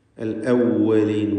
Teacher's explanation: വാവ് ചുണ്ടുകളിൽ നിന്ന് തന്നെ ഉച്ചരിക്കാൻ ശ്രദ്ധിക്കുക. താഴെ ചുണ്ടും മേലെ പല്ലും ചേർത്ത് വാവ് ഉച്ചരിക്കരുത്.